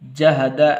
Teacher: جہد دال کو لمبا نہیں کرنا، جہدا ایسے نہیں پڑھنا